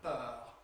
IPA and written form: p˭ œːʁ (purr)